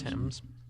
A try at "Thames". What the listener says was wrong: The H is silent. This is English.